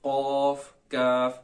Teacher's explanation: कौफ जो है दो नुक्तों वाली, इसको आपने मोटा करके पढ़ना है, लेकिन काफ जो है दूसरी वो बारीक पढ़ी जाएगी। कौफ काफ, इसके अंदर ये बुनियादी फर्क है।